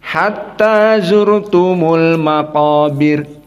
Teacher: semuanya sama kecuali Wars dalam keadaan tarqiq ra